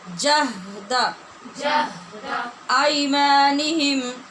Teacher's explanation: آئی میں یا لین ہے، اس کو لمبا کیے بغیر نرمی سے پڑھیں گے